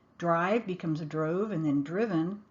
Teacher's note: the vowel sound changes from a long i sound to a long o sound and then to a short i sound